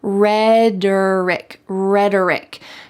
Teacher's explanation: The T in the middle sounds like a D in American English.